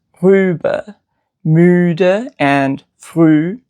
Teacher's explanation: it is a long, high front, rounded vowel, and it is right next to E on the vowel chart. So basically, it's the rounded version of E.